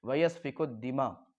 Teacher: ویسفک الدماء میں کاف کے بعد دال کو ہم کاف سے ملا رہے ہیں